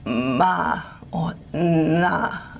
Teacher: you can actually get breathy voiced or creaky voiced nasals like ma or na